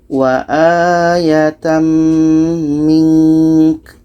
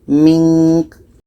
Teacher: Ka ini pendek maka kita matikan. Ka mati ada hamasnya, ada anginnya.